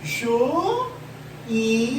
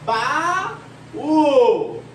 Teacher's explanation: Duas vogais separadas. Existe um hiato entre elas, uma lacuna, um espaço, uma distância